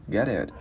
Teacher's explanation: Cái chữ T á mình giữ lại, mình đá lưỡi lên vòm trên ha. Giống như là khi các bạn nói chữ ít nhiều á, hoặc là chữ mệt á.